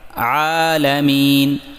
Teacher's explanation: عین کو حلق کے درمیان سے واضح نکالیں عالمین، اور میم کے بعد یا مدہ کو 2 حرکات کے برابر لمبا کریں، یعنی مین، اس طریقے سے رب العالمین۔